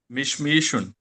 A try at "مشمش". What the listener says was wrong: مشمشن ہے نا، آپ نے پڑھا مشمیشن۔